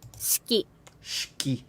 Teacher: Like you almost don't even get that E sound. Because the E kind of becomes part of the next phoneme or whatever.